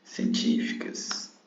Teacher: Científicas. Ó, cas é a última, fi penúltima e ti antepenúltima. Então, a antepenúltima é a tônica. Então, quer dizer que ela é uma proparoxítona.